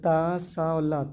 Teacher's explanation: ता सा और ला तीनों के तीनों हमारे दंत से बोले जाते